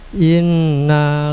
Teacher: gunna musyaddadah nun tasdid tiga harakat